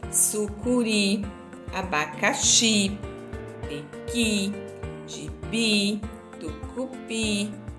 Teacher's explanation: a sílaba mais forte delas é a última sílaba e termina em I